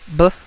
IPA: b